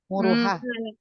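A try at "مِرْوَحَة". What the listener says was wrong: Keharokatnya bukan. Harokatnya roknya sukun, mimnya kasrah.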